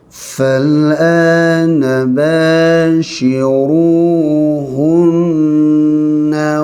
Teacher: Hunna dengung dia, panjangkan dengung ni, wajibul gunnah.